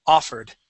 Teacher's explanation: the accent goes at the very beginning, and that O is an A sound